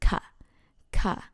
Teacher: when you want to say something you use ka with falling tone